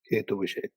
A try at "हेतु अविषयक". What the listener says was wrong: हेतु अविषयक, हेतु विषयक नहीं, हेतु अविषयक। अविषयक ऐसे बोलने की आवश्यकता नहीं है। अविषयक, अ को जैसे विषय बोलते हो वैसे अ को भी जोड़ दो।